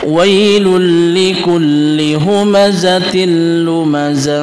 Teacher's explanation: Dain bertemu dengan lam ketika kita menemukan datain bertemu dengan lam maka kita memasukkan huruf yang bertasdid yaitu huruf lam tanpa diikuti dengan dengung yaitu bisa disebut dengan am Bil tanpa diikuti dengan dengung